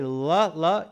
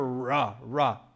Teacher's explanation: la, la, not a lot of movement there, ra, ra, much more tongue movement there